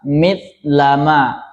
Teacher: kurang dalam menghembuskan nafas akhir. Akhirnya berbunyi seakan-akan ta saja. Misalnya mlama mlama akhirnya diucapkan mitlama.